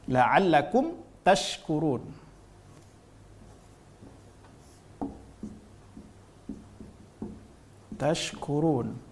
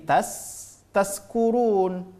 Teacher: Ha ini adalah disebabkan apa karena tidak paham tempat keluar huruf Kalau syin tempat keluar hurufnya adalah tengah lidah sedangkan huruf Sin tempat keluar hurufnya adalah ujung ujung lidah